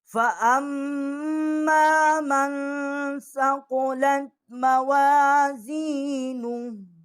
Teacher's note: اب یہاں پر جو فا ہے اس کے اوپر زبر ہے، آگے جو الف ہے یا حمزہ ہے اس کے اوپر زبر ہے، آگے جو میم ہے وہ مشدد ہے، اور میم کے آگے جو الف ہے اس کو ایک الف جتنا ہم کھینچیں گے، یہ حمزہ ہے۔ فَأَمَّا اس کو ہم تشدید بھی کریں گے اور یہاں پر غنہ بھی کریں گے، آگے جو میم ہے اس کے اوپر زبر ہے، نون جو ہے اس کے اوپر جزم ہے، آگے سا ہے، سا کے اوپر زبر ہے، جو مین ہے من ہے اس میں بھی ہم غنہ کریں گے، فَأَمَّا جو ہے اس میں بھی غنہ کریں گے۔